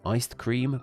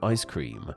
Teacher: we eventually naturally dropped the ED at the end of iced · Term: elision